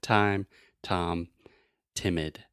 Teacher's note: in English to produce the true T sound we're using the tip of our tongue